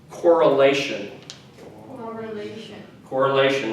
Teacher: again emphasis is on the syllable right before the tion